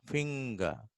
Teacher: See, R is not pronounced.